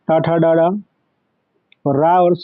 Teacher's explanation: ऋतु रसणाम मूर्धा, तो यहाँ ऋति टा वर्ग पूरा, टा, ठा, डा, डा और रा और सा, ये सब मूर्धा के द्वारा उच्चारण किए जाते हैं।